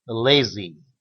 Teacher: Z is voiced between vowels. You should voice this sound naturally. If you do not voice it in your English, make the Z very gentle and short.